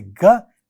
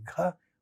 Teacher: When we say ga, less flow of air, and when we say gha, we say see more flow of air.